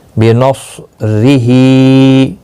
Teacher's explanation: صاد مستعلیہ ہے، پر پڑھا جائے گا